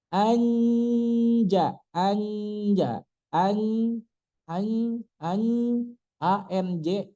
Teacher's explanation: Ketemu jim nempel makhraj jimnya kemudian dikasih gunah, dikasih hidung, dikasih makhraj nun, kan hidung itu makhraj nun.